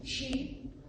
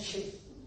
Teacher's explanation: In Manipuri, we don't have this difference between the E, long E, and the short E.